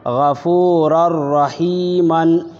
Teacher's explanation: یہاں تنوین کے بعد را ہے، اس لیے ہم غنہ نہیں کر رہے ہیں، یہاں ادغام تام ہو رہا ہے · ادغام کر دیں گے بغیر غنہ کے۔ را 2 زبر رر، غفورر، را زبر را، حیا زیر ہی، غفور الرحی، میم الف 2 زبر من، غفور الرحیمن۔